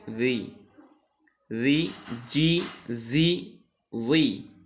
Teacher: পাতলা করে জিবার আগা উপরে দুই দাতের আগার সঙ্গে